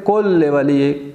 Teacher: جیسے ہم پڑھتے ہیں اللہم کل ولیک، کن لے ولیک، اصل میں ورڈ ہے کن لے ولی ایک، لیکن ہم کیا پڑھتے ہیں کل ولی ایک، ادغام ہو رہا ہے اور غنہ کے بغیر ہو رہا ہے